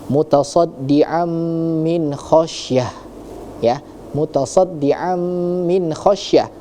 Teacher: ada tanwin bertemu dengan huruf-huruf mim maka hukumnya adalah idgham idgham bighunah